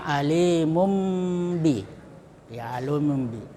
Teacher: Jadi ee tanwin dibalik menjadi ee mim alimum ya. Cara membacanya dengan menyuarakan nun mati atau tanwin menjadi suara mim. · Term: iqlab